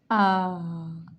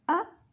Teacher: The difference is alif make a little long sound, you can say a long vowel, ah, and fatha make a short vowel, ah.